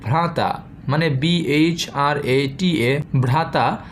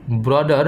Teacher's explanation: হয়েছে সংস্কৃতে যেখানে বিএইচ অর্থাৎ ভ্রাচীন ইংরেজিতে সেখানে হয়েছে বি অর্থাৎ মোটামুটিভাবে বর্গের চতুর্থ বর্ণ স্থানে হয়েছে বর্গের তৃতীয় বর্ণ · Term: জ্যাকব গ্রিমের সূত্রের